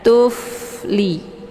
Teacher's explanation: Kemudian tuf, ini fa sukun, dia sifatnya hamas. Jadi dibacanya secara dialirkan dan ada desis anginnya. Tufli. Jangan dipantul.